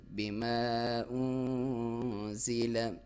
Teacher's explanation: نون ساکن، اس پہ اخفا ہے، باریک اخفا، ناک میں سے آواز لے کے جانی ہے لیکن باریک. بما انزل، زا کو سیٹی کے ساتھ باریک.